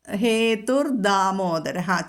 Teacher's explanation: ദാമോദരഹ എന്ന് തന്നെ പറഞ്ഞാൽ മതി അവിടെ ധാ എന്ന് ഘോഷം കൊടുക്കേണ്ട ആവശ്യമില്ല